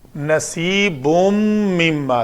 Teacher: تنوین کے بعد میم ہے حروف یرملون میں سے تو ادغام ہوا